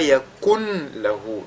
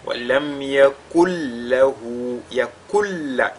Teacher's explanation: Mais ce nun, n'est-ce pas, il va entrer totalement dans la lettre lam. Et cette lettre lam, elle est doublée et c'est ce qu'on doit ressortir, c'est-à-dire le caractère ou l'aspect doublé de cette lettre lam là. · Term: idgham kamil